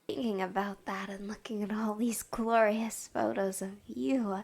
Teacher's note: she's doing a voice here for ASMR purposes that's very breathy